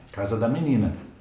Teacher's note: Monossílabo átono, pouca intensidade na pronúncia. Né? Pouca intensidade.